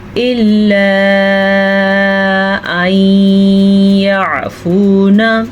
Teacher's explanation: ادغام یعنی ان دونوں کو آپس میں ملائیں گے، یہ شد ملا رہی ہے اور غنّے کے ساتھ ملائیں گے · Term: ادغام بالغنہ